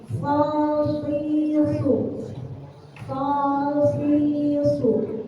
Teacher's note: So termasuk huruf yang keluar dari lidah. Cara membacanya dengan mengangkat pangkal lidah, karena so memiliki sifat tebal.